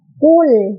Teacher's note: Di ayat pertama dari surat Al-Ikhlas ini, di bacaan qul, maka lamnya itu lam sukun dan tidak boleh memantul